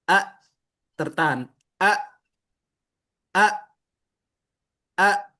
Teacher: Jadi tertahan suara itu tidak bisa keluar lagi. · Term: syiddah